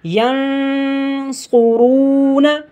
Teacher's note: صاد موٹا کر کے پڑھا جائے کیونکہ حروف مستعلیہ میں سے ہے، را کو بھی موٹا کر کے پڑھیں گے کیونکہ را کے اوپر پیش ہے۔